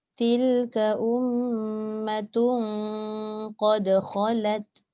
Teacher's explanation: Benda tanwin bertemu qaf tu dengung.